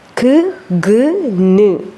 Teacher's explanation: എന്ന് പറയുന്ന ശബ്ദം അതുപോലെ ന് ഓക്കേ ക് ഗ് ന് അത് പറയുമ്പോൾ സോഫ്റ്റ് പാലറ്റിലാണ് നാവിന്റെ ബാക്ക് സൈഡ് പോയി ഇടിക്കുന്നത്